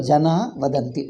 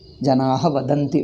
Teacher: Here, according to the second Sandhi rule, Visarga preceded by long A, Janaha, the Va is a soft consonant. Then Visarga gets dropped. Visarga lopaha.